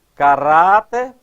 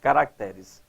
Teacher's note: quando o vocábulo caráter, quando posto no plural, altera a sílaba tônica. Ó, caráter, a sílaba tônica está aqui, no Rá.